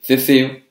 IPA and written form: θe´θeo (ceceo)